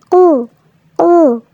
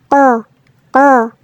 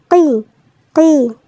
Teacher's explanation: উচ্চারণের সময় জিহ্বার গোড়ার দিকটাতে একটু শক্তি প্রয়োগ করতে হবে এবং এটা মোটাভাবে আদায় করতে হবে। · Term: কফ